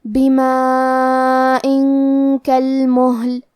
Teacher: آخری میں حمزہ کے نیچے تنوین زیر ہے، پھر حرف الکاف ہے کلمت کالمہل، کاف حروف الاخفاء میں سے ہے، تو ہم یہ حکم کو غنہ کے ساتھ ادا کریں گے · یہ مد واجب متصل ہے، تو ہم اپنی آواز 4 مد کے برابر لمبی کریں گے